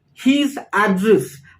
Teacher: when it is a noun his address then we stress on the first syllable on the first part